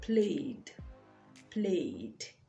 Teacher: the a sound is a diphthong and all vowel sounds are voiced